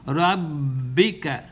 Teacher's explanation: the ba is mushaddada, so hold it for 2 counts